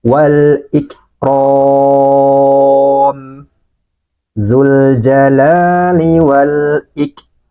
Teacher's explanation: Nah, ada aliran nafas. Ro, panjangkan, ini 4 harokat. Mimnya dimatikan atau disukunkan.